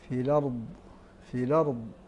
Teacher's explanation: نقل حركه الهمزه للام التعريف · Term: نقل حركة الهمز